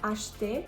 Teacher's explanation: The next H is combined with C, so this is going to be the sh sound, acheter. And notice that the E is not pronounced in the middle of acheter.